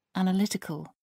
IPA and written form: ˌænəˈlɪtɪkəl (analytical)